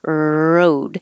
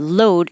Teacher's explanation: the only difference between the r and the l is that for the r the tongue tip curls back and it never touches the top